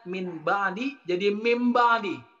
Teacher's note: Ketika nun bertemu dengan ba, nunnya dibalik kemudian menjadi mim. Jadi ketika iklab, nun mati bertemu dengan ba, itu langsung dibalik nunnya menjadi mim.